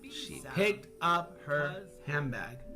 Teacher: the D sound in hand becomes a B sound